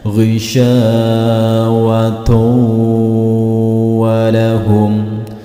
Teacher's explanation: Hati-hati, tulisannya ghisyawatun walahum, tetapi cara bacanya dhammahtain di sini dimasukkan atau dileburkan ke dalam huruf wawu yang ada di depannya serta tidak boleh disentak. Ghisyawatu walahum, tidak boleh disentak, ditahan beberapa detik atau 2 ketukan. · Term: idgham bi gunnah